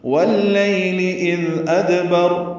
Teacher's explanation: اذ میں دال نرمی سے پڑھیں گے، اس پہ اظہار ہوگا ، اذ ادبر دال ساکن پہ قلقلہ ہے، را وقفاً پر